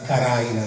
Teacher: nel dialetto di San Fratello, la D ancora passa a R